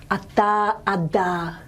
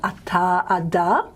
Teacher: blade of the tongue onto the teeth forward okay now um to me the dental sound i call it softer than the plain alveolus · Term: laminal dental